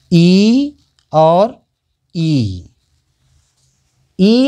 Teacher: तालु के द्वारा जो बोला जाता है ई और ई, इनका उच्चारण स्थान है तालव्य, तालु से बोले जाते हैं इसलिए तालव्य कहते हैं।